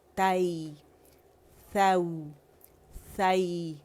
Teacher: آواز اوپر گئی اور نرمی سے یا سے ملی